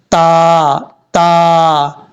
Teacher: اب اس کے بعد ہے تا، یہ جو تا ہے دو نقطوں والا، اس تا کا مخرج ہے زبان کی نوک اوپر والے دانتوں کی جڑوں سے لگے تو تا پڑھا جاتا ہے۔